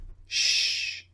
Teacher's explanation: So, same shape of the lips protruding sh the tip of the tongue comes up slightly and you push air out of the mouth, but with the second sound sh, it's unvoiced.